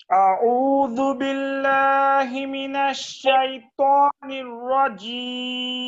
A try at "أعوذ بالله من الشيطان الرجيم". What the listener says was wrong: আউ এই আইনের মাঝে দেখেন তো আরেকটু চাপ দেওয়া যায় কিনা